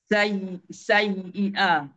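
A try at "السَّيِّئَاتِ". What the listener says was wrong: kena ada sedikit tekanan dekat ya bertanda sabdu tu ya'malunassayi sayy jangan putuskan bila putus jadi sayi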